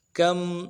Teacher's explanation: کم میم ساکن ہے، اظہار کے ساتھ پڑھیں گے